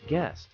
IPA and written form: ɡɛst (guest)